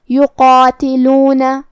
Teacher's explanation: کلمت یقاتلون میں یہاں حرف القاف ہے اور اس کے بعد مد الف ہے کیونکہ مد الف اپنے پیچھے والے حرف کا حکم لیتا ہے تفخیم میں اور ترقیق میں تو ہم قاف کو اور مد الف کو دونوں کو بھاری آواز میں پڑھیں گے